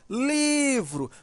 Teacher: Veja que o li, né, demora mais. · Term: sílaba tônica